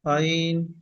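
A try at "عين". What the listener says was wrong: আইন একা এক আলিফ টান দিচ্ছে না কিন্তু তিন আলিফ টান আছে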